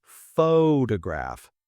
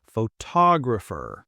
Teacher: we stress the first syllable photograph. But for photographer, we stress the second